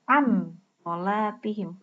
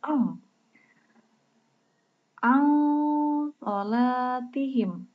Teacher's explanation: Jadi tidak terdengar nun matinya. Jadi samar-samar. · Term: ikhfa